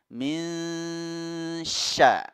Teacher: Tatkala kita menyebutkan nun sukun ini pada ikhfa ini, kita sudah bersiap-siap menyebutkan makhraj huruf shin yang ada di depan huruf nun ini. Makhraj huruf shin itu ada di lidah bagian tengah, ya, lidah bagian tengah yang digesekkan dengan langit-langit mulut kita.